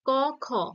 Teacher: ট, ঠ মূর্ধাতে টাচ করছে, তাই এই ট, ঠ মূর্ধন্য। ক খ, জিভ পশ্চাতে চলে যাচ্ছে, কণ্ঠে স্পর্শ করছে, এটা কণ্ঠধ্বনি।